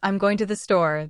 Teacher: the words going and store are stressed more than I'm and to. This stress helps listeners understand what is important in the sentence.